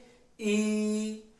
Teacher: हम जीभ के अगले भाग से बोल रहे हैं · जिसका उच्चारण जीभ के अग्र भाग से होता है वो अग्र स्वर कहलाता है